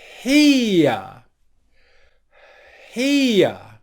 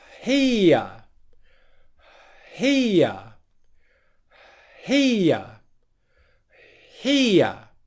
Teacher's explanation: there's silent airflow until i turn the voicing on which is the h sound